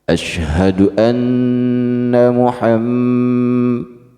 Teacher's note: Anna Muhammad itu juga gunnah, ya. Nun bertasydid gunnah, mim bertasydid gunnah. Dua kali kita gentak dan ditahan. Asyhadu anna Muhammad, itu ya.